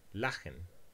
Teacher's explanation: we find the velar fricative preceded by the vowel A and followed by the vowel schwa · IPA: [laxən]